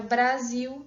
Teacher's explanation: um B e um rã, né, que é uma obstruinte e uma líquida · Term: onset complexo